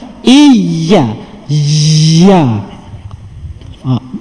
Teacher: nak menyebut huruf ya menggunakan bahagian tengah lidah yang diangkat ke langit keras